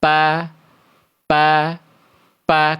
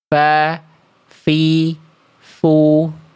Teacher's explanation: Kalau fa kan bukan bibir dengan bibir, tapi fa, fi, fu.